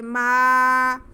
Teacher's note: ما، اس کو میم کو آواز کو ہم کھینچیں گے. ما، منہ کو کھول کے بولیں گے، منہ بند کر کے بولیں گے تو میم کی آواز ناک میں چل جائے گی، ناک میں نہیں جانی چاہیے. آگے واو ساکن سے پہلے ہا پہ زبر ہے، واو لین ہے، اس کو بالکل بھی نہیں کھینچنا.